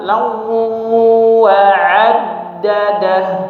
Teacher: Jadi kita baca ada suara yang masuk ke hidung juga ya pada kata lau wa'addadah ya. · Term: idgham bi gunnah